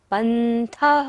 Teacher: था पर भी विसर्ग है तो सारी सांस का विसर्जन करना है।